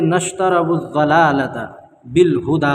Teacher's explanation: نشتروا الضلالۃ یہاں پر جو ہے الف لام کے بعد حروف شمسی کے 14 حرفوں میں سے ضاد ہے، اس لیے الف اور لام کو نہ پڑھیں گے بلکہ بعد والے حرف سے ملا کر پڑھیں گے